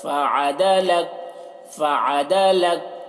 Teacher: عین کو حلق سے ادا کریں گے